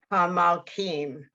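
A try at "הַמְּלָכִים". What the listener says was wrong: Hamalchim. You gotta get the ch in there.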